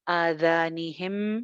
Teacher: जाल जो है ये ऊपर वाले दो दांतों के किनारे से निकलेगा